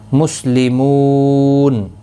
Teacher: بِأَنَّ نون مشدد پر غنہ ہوگا، نہ الف مدہ بھی ہے، ایک الف کی مقدار کے برابر کھینچ کر بھی پڑھیں گے۔ مسلمون، مو واو مدہ ہے، ایک الف کی مقدار کے برابر کھینچ کر پڑھیں گے۔ اور وقف کی صورت میں نون ساکن پڑھا جائے گا، وقف بالاسکان ہوگا، مد العارض وقفی ہوگا، 3 سے 5 الف کی مقدار کے برابر کھینچ کر وقف کریں گے۔